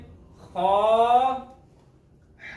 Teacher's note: खा हलक के ऊपर वाले हिस्से से।